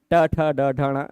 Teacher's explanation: तो मूर्धा उच्चारण स्थान वाले ऋ ट ठ ड ढ ण है।